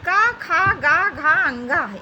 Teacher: इनका उच्चारण स्थान कंठ होता है, इसलिए ये कंठ ध्वनियाँ हैं।